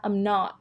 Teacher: not ไม่ออกเสียง T นะคะ